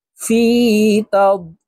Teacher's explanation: লি তিন আলিফ টেনে লামকে সাকিন করতে হবে, কারণ মধ্যে আরজি তিন আলিফ টানিয়া পড়িতে হয়।